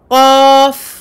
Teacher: De la langue sortiront de nombreuses lettres, dont cette lettre qaf, le fond de la langue qui remonte vers le palais mou